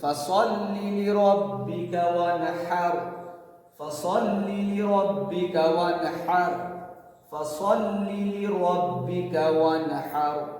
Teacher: فصلی کھینچیں گے نہیں بالکل